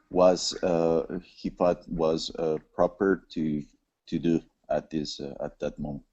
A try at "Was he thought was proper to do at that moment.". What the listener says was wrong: Just work on those TH sounds when you're speaking. So instead of dat, let's hear that nice that.